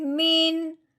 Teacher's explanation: اب ہم نے جب دیکھا ہے تو وہ حمزہ ہے، حروف ہلکی میں سے ہے، اب ہم نے نون ساکن پہ غنہ نہیں کرنا، بغیر غنے کے پڑھنا ہے۔ کیسے؟ میم نون زیر من، یہ ہم نے اظہار کے ساتھ پڑھا ہے من.